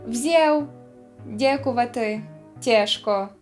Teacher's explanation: Часом «а» переходить в «е»